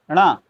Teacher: णा का उच्चारण स्थान नासिका से होता है